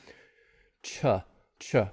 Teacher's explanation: the tongue and then create friction at the same time so there's a stop release and friction at the same time